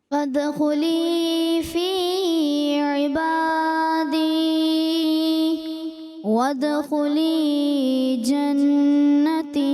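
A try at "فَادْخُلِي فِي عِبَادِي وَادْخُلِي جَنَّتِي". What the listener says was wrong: یہ مد اصلی جو ہے نا، یہ چیزیں آپ سمجھیں. فادخلی فی عبادی، یہ زیادہ ہو رہا ہے. فادخلی فی عبادی وادخلی جنتی.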